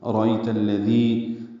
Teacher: لام سے ملانا ہے، ارأیت الذی، دال نرمی سے پڑھنا ہے، ذی یا مدہ ہے، دو حرکات لمبا ہے · را پر پڑھیں گے، ای عائلین ہے، نرمی سے پڑھیں گے، تا کو الذی کے لام سے ملانا ہے